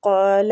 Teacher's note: قاف کو مستعلیہ ہے، پور پڑھیں گے اور کھینچیں گے الف مد کی وجہ سے۔